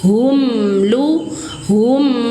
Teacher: Nah, itu mengalir suara mim satu ketukan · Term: izhar syafawi